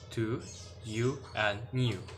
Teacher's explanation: Okay, next, the first of the high vowel is U, as in a foot. It is made with the rounded lips and it is known as the high back rounded vowel. It is a long vowel and so may be transcribed as oo in the word to, you, and new.